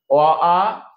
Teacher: অ আ কণ্ঠ থেকে উচ্চারিত হয়, তাই কণ্ঠ স্বরধ্বনি